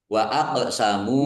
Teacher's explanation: qul innamal ayatallahi wama yusirukum annaha idza jaat laa yukminun ya mari Wa aqsamu qof sukun bacaan qalqalah dibaca memantul ditampakkan pantulannya nya mim dumah wau sukun mad thobi'i panjang dua harakat